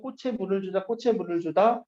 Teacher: 꽃에 물을 주다, 꽃에 물을 주다, 치읓 소리가 그대로 나는 것 같죠? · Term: 연음